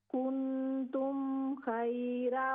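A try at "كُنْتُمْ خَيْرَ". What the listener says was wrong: खैरा, खा full mouth से, खैरा।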